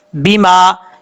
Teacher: بے ما نہیں پڑھنا، با زیر بی ہوتا ہے، بے نہیں ہوتا